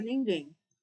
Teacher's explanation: E o M será uma semivogal porque tem som de i. A gente fala nem fala ningém.